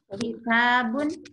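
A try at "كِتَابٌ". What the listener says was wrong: Naam, mumtaz.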